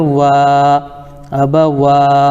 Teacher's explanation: کھڑا زبر برابر ہوتا ہے الف مدہ کے، ان کو تھوڑا کھینچ کر پڑھیں، جیسے واو کھڑا زبر وا، اب وا۔